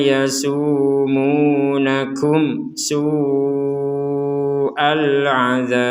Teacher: Mim mati bertemu sin kita baca dengan jelas. Jadi mimnya terbaca. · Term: mim sukun